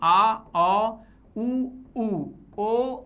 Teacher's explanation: इन स्वरों के उच्चारण में जिह्वा या जीभ का पश्च भाग सक्रिय रहता है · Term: पश्च स्वर